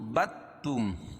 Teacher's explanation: یہاں ادغام ہوگا، ٹھیک ہے، دال کا تا میں ادغام ہوگا. اور وقفہ کی حالت میں جو ہے اس کے اوپر تو پہلے سے جزم لکھی ہے.